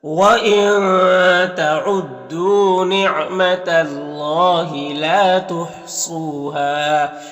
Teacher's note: یہاں پر واو مدہ ہے اور ہاں میں الف مدہ ہے تو ایک الف کے برابر کھینچیں گے دونوں کو